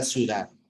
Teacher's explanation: en la palabra ciudad siempre que tengamos dos vocales cerradas la segunda se va a desempeñar como núcleo